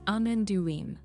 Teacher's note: Keep the stress on do and let the ending be quick and light.